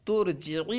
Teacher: ارجعی کے شروع میں جو حمزہ وصل ہے یہ گر گیا، کیوں؟ تا سے ملنے کی وجہ سے۔ جب ہم تا سے ملا کر پڑھیں گے وصل کی صورت میں اس کا حمزہ گر جائے گا۔